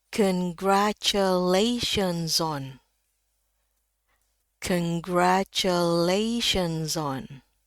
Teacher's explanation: Jadi Z bisa langsung masuk eh ke O gini ya.